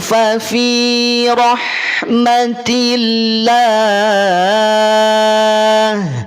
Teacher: ha dialirkan suara dan nafasnya